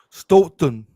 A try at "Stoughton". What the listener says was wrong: Don't pronounce the second T. Like Stoughton. Stoughton. Like Leominster, Gloucester.